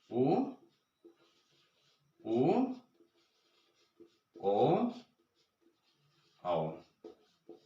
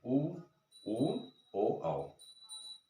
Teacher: ओष्ठस्थ स्वर जिनका उच्चारण स्थान ओष्ठ है